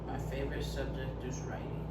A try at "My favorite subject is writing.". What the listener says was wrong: Good job.